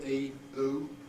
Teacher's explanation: E and oo tend to be a bit diphthongal